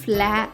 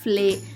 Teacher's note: F L యొక్క శబ్దం ఫ ల కాకుండా ఫ్ల అవుతుంది